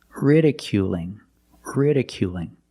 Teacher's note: it's a light L because it's between vowels